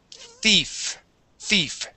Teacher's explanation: All right, let's talk about the TH, okay? So when we pronounce the TH sound, like in thief, our tongue goes between our teeth, just like that.